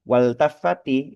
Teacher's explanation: Maka alif lamnya itu tidak kena hukum ee alif lam syamsiyah gitu ya. Tetap harus dibaca izhar lam sukunnya harus dibaca jelas seperti itu.